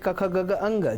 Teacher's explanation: ક ખ ગગ અંગ જે કંઠમાંથી નિષ્પત્ત થાય છે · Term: ક વર્ગ